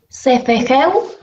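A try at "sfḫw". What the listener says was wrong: Cefejú. Acá no le agregamos la E, porque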